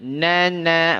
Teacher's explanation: Dari ujung lidah bertemu dengan gusi, ya.